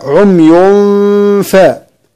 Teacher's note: تنوين بالضم على الياء بعديه فاء هذا إخفاء